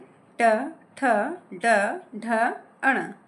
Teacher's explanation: ट वर्ग का उच्चारण मूर्धा से होता है